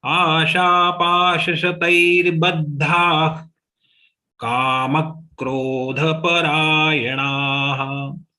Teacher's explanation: the visarga has to be pronounced like kha.